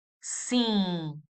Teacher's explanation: we produce a nasal sound. Sing. Very nasal. We don't close the lips in the end.